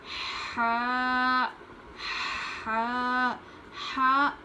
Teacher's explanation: حلق کے نچلے حصے سے پڑھتے ہیں. حلق کے جو اندر سے آواز نکلنی چاہیے. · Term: بڑی ہا